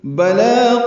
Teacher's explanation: بلا لام پر کھڑا زبر، 2 حرکات لمبا کریں گے